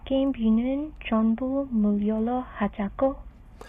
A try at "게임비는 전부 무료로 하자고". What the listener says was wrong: I think she said 무료로. 무료, but you can be a little softer with the 리을. So say 무료로.